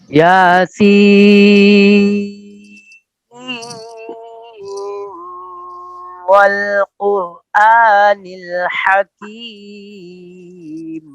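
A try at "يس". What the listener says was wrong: آپ کا غنہ پورا نہیں ہوا، پھر پڑھیے آواز کٹ گئی تھی، پھر پڑھیے اندر میاؤں کیا آپ نے، آواز ایسی آئی ہے یاسین، ایسے کریں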